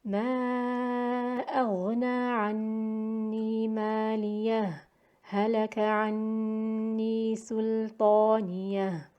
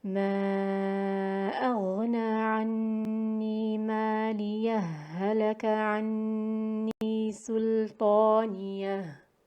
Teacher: So with sakt jaiz, it would be read with a breathless pause between the two words, which is less than the time of waqf